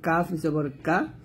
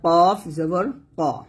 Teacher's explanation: কাফ না এটা হচ্ছে কফ কফ জবর ক মোটা করতে হবে কাফ পাতলা হবে কফ মোটা হবে